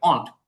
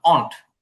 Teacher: তবে এখানে একটু চন্দ্রবিন্দু দিলে একটু নাকের ভিতর যাবে অন্ট। আর ডব্লিউটা উচ্চারণ হইবে না। না, ডাব্লিউটা ওরকম উচ্চারণ হবে না, অন্ট। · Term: ব্রিটিশ উচ্চারণ